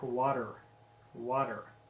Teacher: try the t in the middle of the word water water many americans will change the t sound to a d sound · Many Americans will change the T sound to a D sound. It sounds something like water.